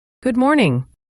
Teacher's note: Notice how good and morning can blend. The D in good is often very light, almost like it disappears